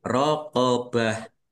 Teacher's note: Tak marbutah kasrah tanwin. Ini karena waqaf maka dibacanya ha sukun. Rqobah ya. dibaca ha sukun dan waqafnya dibaca pendek karena tidak ada tanda panjangnya.